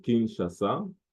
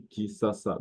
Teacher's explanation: Le SH peut se prononcer S, très souvent